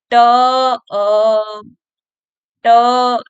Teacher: मतलब ध्वनि जो है हमारी ट के बाद अ भी निकल रही है